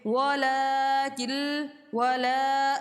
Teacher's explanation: کاف جو ہے سیدھا لام سے جا کر ملے گا، نون کو چھوڑ دے گا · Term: ادغام